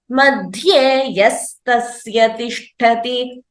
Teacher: So while telling together, you can also combine and chant it as madhye yastasya tishtati. So the visarga becomes sa by virtue of a sandhi rule.